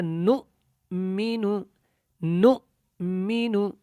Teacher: نون اور حمزہ جب آپس میں ملیں گے تو حمزہ کی جو ہے آواز میں جھٹکا ہوگا